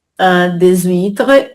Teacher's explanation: Des huîtres, on fait la liaison. C'est un H muet.